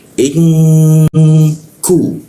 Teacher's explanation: Dia ditahan dua ketukan lalu didengungkan di huruf K. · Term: ikfa